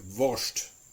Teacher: In some dialects, especially some Southern German dialects, the St and the SP is almost always pronounced like a SHT or like a SHP.